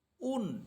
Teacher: আমরা যখন দুই পেশ দিয়ে পড়বো তখন ঠোঁট গোল করে পড়বো